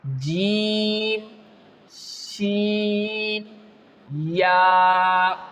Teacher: You can feel that the center of your tongue is rising towards the upper part of your mouth.